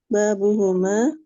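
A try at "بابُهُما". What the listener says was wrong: mantap.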